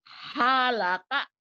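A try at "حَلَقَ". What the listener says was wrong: Ada desahnya itu masih. Halaka.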